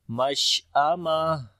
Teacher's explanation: ہم اصحاب المشأمہ، شین کے اوپر صفت تفشی اور ہمس دونوں آئے گا، اور جب رکیں گے تو تا ہا بن جائے گی